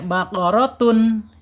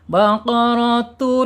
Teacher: Ya, idgham bila gunah. Tanwin dilebur ke huruf lam.